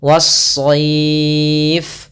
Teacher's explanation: Awalnya al-sayf, tapi karena dia tidak bertemu dengan huruf shad, maka lamnya diidghamkan ke huruf setelahnya sehingga lamnya hilang. Sehingga kita langsung membaca shadnya tasydid. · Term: alif lam syamsiyah